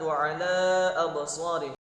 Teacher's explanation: wa ala la-nya itu terdapat hukum mad jaiz munfasil. Ditilawati maka harus dibaca panjang 5 harokat, ya. Absarihim him, maka mim sukun ketemu ghain itu adalah izhar syafawi.